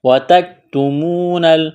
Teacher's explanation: واو مدہ ہے, ایک الف کے برابر کھینچنا ہے